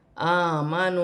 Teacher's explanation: اوپر چھوٹی مدہ منفصل 3 الف کی مقدار کھینچ کر پڑھا جائے گا